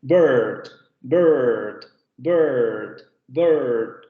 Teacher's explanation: Si ustedes escuchan la pronunciación de esta palabra en inglés, bird, se van a dar cuenta que esa vocal tiene un cierto fenómeno de rotacismo, o como lo escuchamos nosotros, como si tuviera ahí una R. En realidad, ese sonido vibroso, vamos a decirlo así, ese sonido rótico, lo adquiere la vocal. · ese sonido rótico, lo adquiere la vocal. Por eso se le denominan vocales róticas.